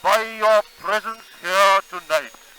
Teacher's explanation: most of British English has given up on saying the R after vowels.